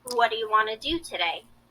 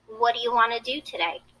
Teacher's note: Notice how what do you became what do ya, and want to became wanna.